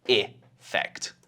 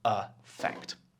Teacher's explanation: in my pronunciation in British, we're usually saying /əˈfɛkt/